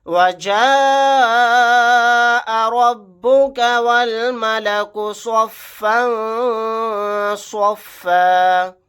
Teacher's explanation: یہاں پر مد متصل کا قاعدہ ہوگا، اس مد کو ہم 4 الف کی مقدار کھینچ کر پڑھیں گے، واو کو لام کے ساتھ ملا دیں گے، الف نہیں پڑھا جائے گا.